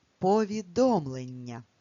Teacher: промовляючи це слово, звук Нь, трошки протягуємо · в слові повідомлення є подовжений м'який приголосний звук, який позначається двома буквами н.